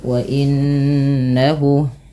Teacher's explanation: tahan bunyi suara nunnya sepanjang dua harakat karena ia bacaan gunah